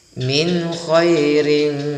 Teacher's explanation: kha itu ya halqi, maka akan dibaca izhar, baca jelas. Min khairin, tidak boleh min, tapi harus dibaca langsung jelas.